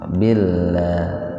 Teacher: Lafaz Allah didahului dengan kasroh lafaz Allahnya dibaca tipis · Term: tarkik